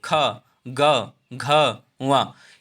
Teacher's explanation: तीनों आवाजें कहाँ से निकलती हैं? कंठ से निकलती हैं। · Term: कंठस्थ व्यंजन